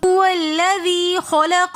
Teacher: واو اور لام کے درمیان ایک الف ہے، یہ حمزۃ الوصل ہے جو درمیانی کلام میں آنے کی وجہ سے گر جائے گا، اس الف کو ہم نہیں پڑھیں گے بلکہ واو کو لام کے ساتھ ملا کر پڑھیں گے۔ هو الذی میں یا مدہ ہونے کی وجہ سے لذی تھوڑا سا اس کو ہم کھینچ کر پڑھیں گے، ایک الف کی مقدار · هو الذی کے اندر واو کو ہم لام کے ساتھ ملا کر پڑھیں گے۔ واو اور لام کے درمیان ایک الف ہے، یہ حمزۃ الوصل ہے جو درمیانی کلام میں آنے کی وجہ سے گر جائے گا، اس الف کو ہم نہیں پڑھیں گے بلکہ واو کو لام کے ساتھ ملا کر پڑھیں گے۔